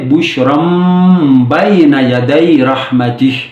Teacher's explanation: بشرن ہے لیکن ہم نے اقلاب کر لیا، یعنی میم کو پڑھ لیا